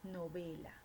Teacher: presenta la sílaba tónica en la penúltima, por lo tanto tenemos una grave.